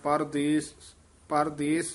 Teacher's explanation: ਹੇਠਾਂ ਰਾ ਲਾ ਕੇ ਨਹੀਂ ਬੋਲਣਾ ਰਾ ਪੂਰਾ ਹੀ ਬੋਲਣਾ